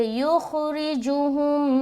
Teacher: ये मीम साकिन के बाद दूसरी मीम आ रही है, तो यहाँ पर हो गया इदगाम शफवी का कायदा। मीम को मीम से मिलाकर गुन्ना करेंगे